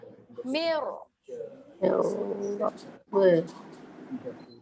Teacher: Tapi bagi huruf ra ini getaran dia sedikit kuat. Okay, jadi kita angkatkan itu, lidah tu dia kuat sikit.